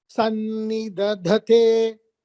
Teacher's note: Only second dha is Mahaprana.